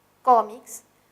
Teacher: La palabra cómics es una palabra grave, tiene el acento en co, cómics, termina en S, pero esta S está precedida por consonante, entonces sí tildamos.